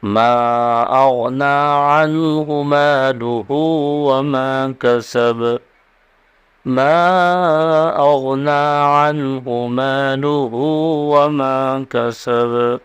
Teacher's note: مالہ یہاں ہا پر، ہا کو کھینچیں گے 1 الف کی مقدار الٹے پیش کی وجہ سے، اور کسب میں با پر قلقلہ ہوگا۔